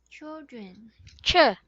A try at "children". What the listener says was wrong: Ch. Not children, not chul. It's chi. Chi. You're saying chu. it's not chu, but it's chi. Chi. Chill. Chill. Chill. chul. Like you are about to kiss a thing, but it's chi. Chi.